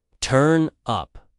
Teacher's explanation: the stress is on up in both meanings